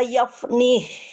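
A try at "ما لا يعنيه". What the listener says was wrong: Bukan yaf itu Bu, itu ma la ya'ni.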